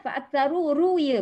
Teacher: Mad asli, sifat ra di situ tafkhim, tebal ya. Dan di situ ada alif yang bulat tu.